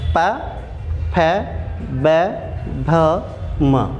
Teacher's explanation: ये भैया ओष्ठ से बोल रहे हैं, ओष्ठव्य कहलाएंगे, ओष्ठ्य, ओष्ठ्य कहलाएंगे।